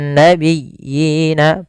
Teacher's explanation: Yang satu berharakat, yang satu tidak. Maka dinamakan dengan mad tamkin panjangnya sama dua harakat.